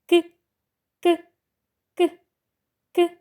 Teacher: цей звук Чи можемо ми його проспівати вимовляємо цей звук важко проспівати не можемо тому що утворюється перешкода на шляху нашого вимовляння тож діти це означає що звук к приголосний твердий звук